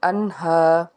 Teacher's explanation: اس کے بعد ہے انہا، نون ساکن کے بعد ہا ہے، تو نون ساکن کے بعد جب حروف حلقی کے 6 حروف آتے ہیں تو ہم یہاں پہ اظہار کرتے ہیں، یعنی کہ غنہ نہیں کرتے۔ الف سے پیچھے زبر ہے، ایک الف کے برابر کھینچ کے ادا کریں گے، انہا۔